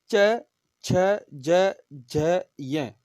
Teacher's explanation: ई यानी ई से ई और ई दोनों वर्ण, चू वर्ग है, च वर्ग पूरा च छ ज झ और य, और इसके साथ में यकार, य और सकार, श शंकर वाला, तालु, ये तालव्य वर्ण है, यानी इनको बोलते समय हमारी जीभ है वो तालु को स्पर्श करती है